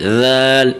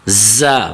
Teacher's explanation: ذال جو ہے وہ اسے نرمی کے ساتھ پڑھا جاتا ہے، بالکل اس کی ادائیگی نرم سی ہوتی ہے، ذال، اس طرح، اور جو زا ہے اسے سختی اور شدت کے ساتھ پڑھا جاتا ہے